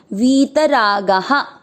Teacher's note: वी की मात्रा बड़ी, लंबा खींचना है, वी त में मिक्स करना, वीत रागा। गा में आ की मात्रा तो विसर्ग को पढ़ेंगे हा